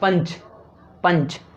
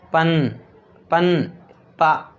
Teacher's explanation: जैसे मैंने बोला क्या, पंच, पंच, तो जो नाक से आवाज़ आ रही है वो किस व्यंजन के बाद में आ रही है वो देखो, पन, पन, पा, देखा, पा के बाद में ही नाक से आवाज़ आ रही है